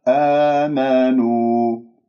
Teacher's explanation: نو نون مضمومة أضم الشفاه فيها